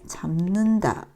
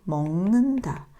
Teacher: 소리가 니은의 영향으로 비음의 영향으로 파열음이 비음이 되는 겁니다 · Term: 비음화